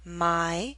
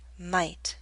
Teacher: The Y in my is longer because it's an open sound. T is a voiceless consonant.